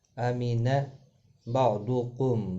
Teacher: ضاد مستعلیہ ہے، پر پڑھا جائے گا